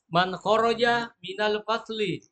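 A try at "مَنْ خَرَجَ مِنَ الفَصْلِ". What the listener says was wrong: Man kharaja minal fasli. Ulangi, bukan fadli, fasli.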